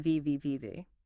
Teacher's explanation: For the V sound, your bottom lip must gently touch your top teeth, allowing air to escape with friction